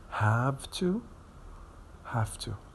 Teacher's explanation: Because the T is voiceless, we have to change the V into a voiceless counterpart. So the V will change into F to be voiceless, just like the T sound.